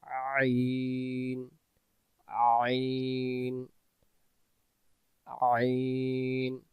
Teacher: আইন জবর আ মানে গলার মাঝখানে থেকে আসবে